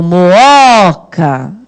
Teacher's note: E a sílaba tônica vai ser o segundo O, ó. Tá vendo?